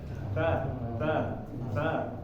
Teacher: Jadi kalau misalnya kita udah taruh di antara gusi sama gigi kita, di tempat tumbuhnya gigi udah taruh lidahnya di situ, kita ucapkan huruf ta. Nah, itu ada angin sedikit keluar dari ujung ya, dari ujung lidah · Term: hamas